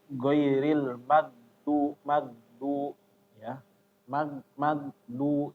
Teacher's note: Kayak bahasa Indonesia G ya. Kalau Indonesia kan itu G biasanya di stop. Nah, jadi nanti imbasnya kalau di stop keliru ya.